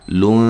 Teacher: لون یہاں نون تنوین کا اخفا ہے باریک